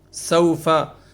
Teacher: سو میں لین کا قاعدہ ہے، اس کو ہم زیادہ کھینچیں گے نہیں، آدھے الف کے برابر کھینچنا ہے صرف